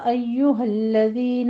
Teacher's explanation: ایہا الذین دونوں جگہ تشدید ہے، سختی سے ادا کرنی ہے